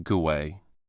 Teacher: Saying go and then away can feel a bit sudden. So speakers often add a very small W sound in between making it sound like gouay.